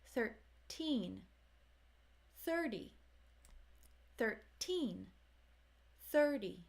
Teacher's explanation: 13 has stress on teen whereas 30 you hear it at the beginning